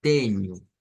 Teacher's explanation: Digamos como la consonante más nasal es la ñ realmente todas son nasales pero la ñ como que tiene más